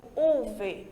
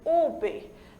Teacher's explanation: a letra V, nosso V de vaca, em espanhol, a gente pronuncia como se estivéssemos pronunciando o nosso B de bola. Por isso que eu não digo UV, eu digo UB, certo?